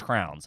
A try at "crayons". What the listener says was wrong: Crayons. Yeah, crayons. Crayola crayons. It's crayons. you hear the Y in there. Crayons. You're not supposed to hit the Y really hard.